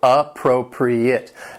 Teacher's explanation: The word has 4 syllables, and the stress is on that second syllable